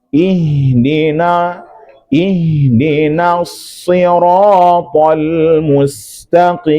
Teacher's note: Nah, ihdina ketika berpindah dari na ke shad pada ihdinas itu pastikan na dibaca tipis.